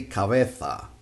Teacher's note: For Spanish from Spain, the Z sounds like th